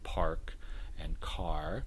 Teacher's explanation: most varieties of american english are rhotic they tend to preserve the r